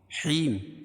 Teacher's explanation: یا ساکن سے پہلے زیر ہو تو یا مدہ، اس کو ایک الف کے برابر کھینچ کے پڑھیں گے، اور جب یہاں میم پر وقف کریں گے تو یہ مد عارض وقفی ہوگا۔